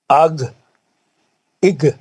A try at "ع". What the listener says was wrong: نہیں یہ گائن نہیں ہے، یہ آئین ہے. آئین آئین ہے.